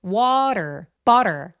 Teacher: water, butter 같은 것도 요 T 소리가 굴러가는 살짝 리을과 D의 사이에 느낌의 소리가 나죠. 그래서 요 T가 굴러가게 발음할 수 있다. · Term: flap T 사운드